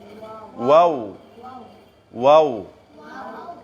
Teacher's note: ওয়াওটি বের হয় দুইটা ঠুট থেকে, তবে দুইটা ঠুট একটু ফাঁক করিয়া